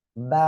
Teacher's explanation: দুই ঠোঁটের ভিজা অংশ থেকে উচ্চারণ হবে।